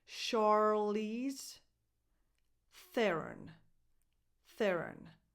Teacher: Charlize, the first sound is a sh, not a ch.